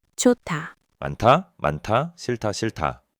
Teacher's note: the h just adds a little puff of air to the next consonant. It's way easier to say than stopping fully between them.